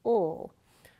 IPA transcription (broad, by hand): l